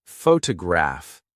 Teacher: photograph, noun, is stressed on the first syllable, but photograph adjective, is stressed on the third.